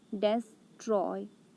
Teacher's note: Des is unstressed, Troy is stressed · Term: iambic foot